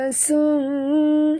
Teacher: Dia bertemu dengan huruf sin, adalah ya, ikhfa hakiki ya. Kita sorokkan bunyi nun ke dalam sin disertai dengung ya. Dia bukan baca insun, bukan macam itu ya.